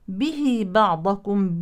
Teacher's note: بين الكلمتين مد صله صغرى يلحق بالطبيعي ويمد بنفس مقدار المد الطبيعي